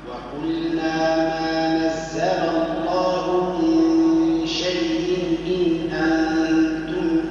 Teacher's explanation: وأظهر النون عند حرف الحلق